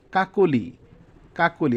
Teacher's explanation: অ এর পরে যদি রসই রস বা তার কার চিহ্ন থাকে তবে অ এর উচ্চারণ ও এর মত হবে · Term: মধ্য অ